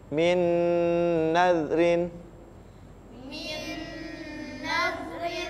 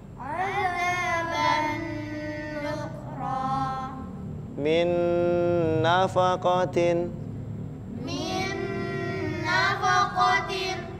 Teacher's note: sama-sama dibaca dengung selama tiga harakat